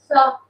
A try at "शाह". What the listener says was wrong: शाह. शाह. बेटा बहुत फनी लगता है जो सा करते रहते हैं. शाह. हाँ थोड़ा सा शा शा शा शा जीभ ऊपर रखो श और सा के बीच का आधा क्योंकि नीचे भी आ रही है बात लेकिन प्रैक्टिस कर आ जाएगा ठीक है कल एकदम परफेक्ट होना चाहिए